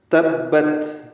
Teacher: تبت، تا کو با سے ملانا ہے اور با کو تا سے ملانا ہے۔ تبت، تا ساکن ہے، اس پہ ہمس ہوگا، سانس جاری رہے گی۔